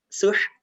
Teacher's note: Ada hembusan nafas lewat mulut